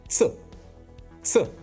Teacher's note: like the double Z in pizza, except that in Russian the sound is shorter